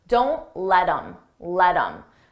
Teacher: I take that H off of him, I drop the sound, and then I'm left with im, but I combine it with the word before.